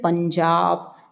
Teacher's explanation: पंजाब प के बाद न की आवाज आ रही है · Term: अनुस्वार